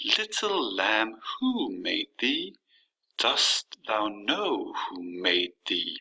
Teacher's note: there has to be a stress on every other syllable starting on the first syllable and then the second syllable is uh unstressed and then stressed again unstressed stressed so little lamb who made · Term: trochaic meter